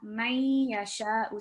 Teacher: we can partially hear the Noon sound when we join it, but we can't completely hear it. So this Noon is merged into the sound of the Ya Mushaddad. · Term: partial assimilation